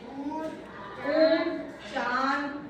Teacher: हवा नाक और मुख दोनों से निकलती है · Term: अनुनासिक